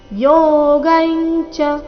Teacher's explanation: ಯೋಗೈಂಚ ಇಲ್ಲಿ ಚ ವರ್ಗದ ಅನುನಾಸಿಕ